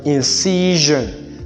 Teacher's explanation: it is characterized as a voiced post palatal fricative